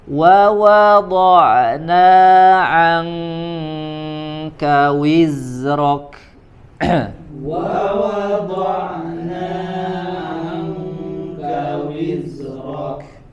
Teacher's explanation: wa sempurnakan dhammus syafatain, ya, dimanyunkan bibirnya pada 2 huruf waw sini